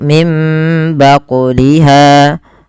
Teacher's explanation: Kemudian pada lafal baquliha ada bacaan qalqalah pada lafal huruf qaf yang disukunkan. Maka cara membacanya harus memantul dan tidak boleh menambah hamzah